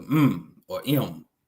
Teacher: So the letter M the letter M makes a nasal is a nasal labial sound. So use your nasal passage and you use your lips to make the sound